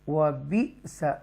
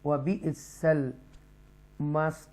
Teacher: عذاب النار، یہاں پر بھی آپ اکفا کریں گے، وَبِئْسَ یہاں جھٹکا دیں گے، ٹوئچ کریں گے، حمزہ ساکن ہے